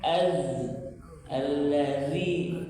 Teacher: Ketika fathah dibaca zal ujung lidah sedikit dikeluarkan.